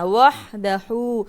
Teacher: পড়তে হবে হলকের মধ্যখান হইতে হা আর এটা হলো গোল হা এটা হলো এক হাক এটা হলো